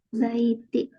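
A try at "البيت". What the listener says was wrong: Al-baitu. Jadi kalau harokat akhirnya didomahkan semua. Al-baitu. Dia termasuk huruf qamariyah apa syamsiyah? Qamariyah.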